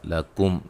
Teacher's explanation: میم ساکن کا اظہار ہوگا ملانے کی صورت میں، یعنی کہ غنہ نہیں کریں گے